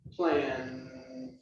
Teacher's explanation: notice the sound at the end plan it is voice there is vibration